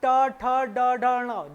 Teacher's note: ट वर्ग की बात करें तो मूर्धन्य, जीभ मुड़ती है, ट ठ ड ढ ण, जीभ मुड़ती है पूरी, तो ये ट वर्ग वाला मूर्धन्य ये हो गया ट वर्ग।